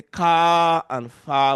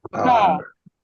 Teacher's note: We may lengthen, you may say the A longer, we may say car and far, but the R is not sounded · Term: suppression of the R